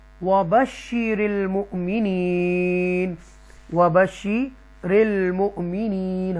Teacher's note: مؤمنین جھٹکے سے پڑھیں گے، حمزہ ساکنہ ہے اس لیے